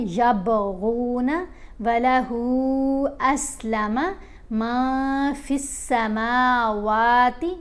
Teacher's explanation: میم اور واو کو لمبا کریں گے، کھڑا زبر ہے